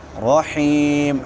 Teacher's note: حا ٹھیک ہے وسط حلق سے اور مدہ بھی ہے، حا کے بعد یائے مدہ ہے، یا ساکن ما قبل کسرہ ہے.